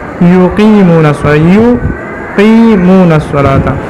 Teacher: یا کے اندر جہر ہے، اور اسی طرح رخوت ہے، اور استفال، انفتاح اور اسمات ہے